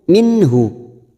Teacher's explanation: ada nun sukun bertemu ha, idhar halki, dibaca jelas tanpa mendengung